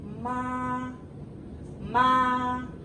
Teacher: Ma is high and flat.